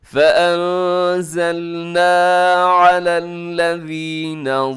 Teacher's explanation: یہاں نون ساکن کے بعد زا ہے تو یہاں پر آپ نے اخفا کرنا ہے